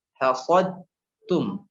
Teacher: Nah, contohnya ya, ada contohnya misalnya dal bertemu dengan ta, hasadtum. Masukkan dal sempurna ke ta. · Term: Idgham mutajannisain